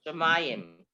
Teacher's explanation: There's a metic under the next to the last syllable. Okay. Okay. Shamayim. The emphasis is on the next to the last.